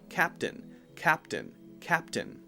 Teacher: you can't hear a sound between the P and the T